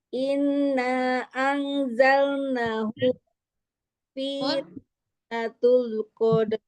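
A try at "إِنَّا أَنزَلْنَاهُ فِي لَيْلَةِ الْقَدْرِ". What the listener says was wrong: Inanya kurang panjang. Mazaid munfasil. Inanya kurang.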